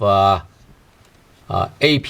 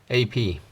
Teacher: That's what I mean by glottal stop. So you try to aspire and pronounce the word P, but then eventually you stop right before you aspire.